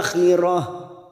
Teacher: ada tak marbuto, ini kita baca dengan huruf ha.